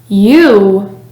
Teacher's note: The sound U is voiced, meaning your vocal cords vibrate when producing the sound. Your tongue stays in the upper middle part of your mouth, and your lips are rounded when pronouncing the sound U. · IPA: /ju/